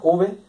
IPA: v